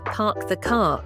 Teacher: In British English it sounds like 'pahk the cah' it's called a non- rhotic accent because they drop the r.